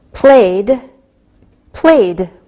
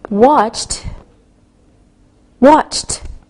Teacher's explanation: we pronounce the ed sound like a soft D or a soft T